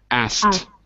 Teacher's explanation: Here, to make it easier, you're dropping the K.